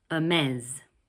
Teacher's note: In English, it's pronounced Hermès. Notice that the final S sounds like a Z.